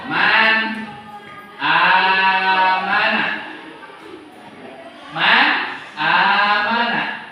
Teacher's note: Ketika nun bertemu hamzah maka disebutnya izhar, bacanya harus jelas man. Jadi mahrojnya harus betul-betul nyampe.